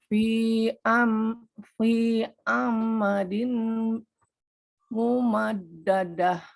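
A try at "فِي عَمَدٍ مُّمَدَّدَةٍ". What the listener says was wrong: Fi amadim. Ini mimnya langsung ke ma aja, Bu, nggak ada tasdidnya. Amadim. Amadim.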